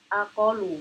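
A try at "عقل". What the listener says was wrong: Itu pakai ain.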